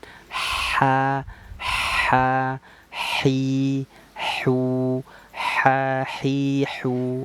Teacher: Kalau yang ha ini keluarnya dari tengah tenggorokan